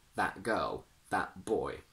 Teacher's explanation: when the letter T is followed by a consonant, we use a glottal stop. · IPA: /ʔ/